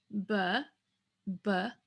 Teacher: we would have the lips together with vibration